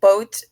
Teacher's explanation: in the midwest it is often pronounced like ow for example boat may sound like bout to a Midwestern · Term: long o sound